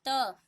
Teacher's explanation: त आपकी जीभ अपने आप आपके दांतों से टकराएगी, तो इनका उच्चारण स्थान क्या हो जाता है, दांत।